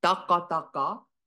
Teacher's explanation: for the goat, the consonants are plosives, so the T sound and a uvular ah sound, which are definitely hard sounds